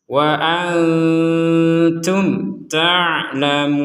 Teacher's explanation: nun sukun bertemu ta, kita membacanya samar. Mim sukun bertemu ta, kita bacanya jelas. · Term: samar jelas